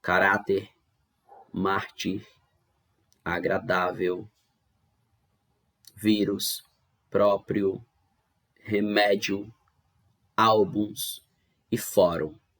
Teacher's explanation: em todas elas nós tivemos a penúltima sílaba sendo a mais forte ou seja a penúltima sílaba sendo a tônica por isso que elas são paroxítonas Já chegamos agora nas palavras